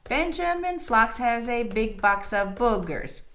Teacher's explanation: we have that extra unstressed beat on the end, which is okay. It's called a feminine ending. It ends on a beat that goes down instead of up.